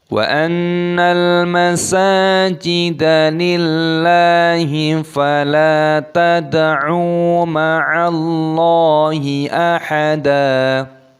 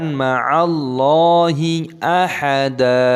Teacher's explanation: dalnya dibaca panjang, bukan ahadan tapi ahada